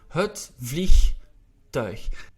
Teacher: the IE, which we pronounce as E, not as I, like in English, in Dutch.